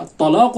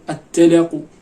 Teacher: كذلك أيضا الترقيق في الطاء، مثلا الطاء هذا الطلاق مرة ما يبداش يرققها، يولي التلاق يولي فتصبح تاء، فهذا لا يجوز.